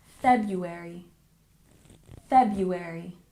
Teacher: we stress the first syllable and we drop that first R sound